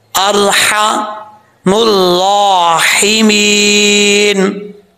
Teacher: यहाँ पर दोनों हा बरीक हैं जो जीम की शक्ल में है। अरहम भी इसमें भी हा बरीक है, राहिमीन में भी हा बरीक है। तो यहाँ दोनों एहतियात से पढ़ना है दोनों लफ्ज़ों को।